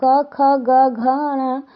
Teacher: क वर्ग के सभी व्यंजन क, ख, ग, घ, ङ सभी कंठ से उच्चारित होते हैं।